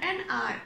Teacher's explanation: the sound of h is silent